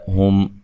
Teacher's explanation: ہم میم ساکن کا یہاں اظہار ہے، غنہ نہیں کریں گے اور میم ساکن کو ہلانا نہیں ہے۔